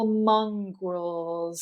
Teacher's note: now technically this is a z as well but it's very soft because it comes at the very end